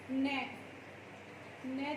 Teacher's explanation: न जब हम बोलेंगे तो उसमें हमारे नाक का और मुख का दोनों का ही प्रयोग होगा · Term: अनुनासिक